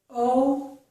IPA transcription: o